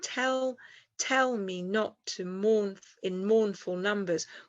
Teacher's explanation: We've got 4 trochaic rhythms. That's strong, weak in a line. So that's trochaic tetrameter.